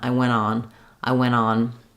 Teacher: Or also very common is to drop the T of went because the next word starts with a vowel. And so we're stressing on the when part, and then we're just linking from the n right to the vowel of on.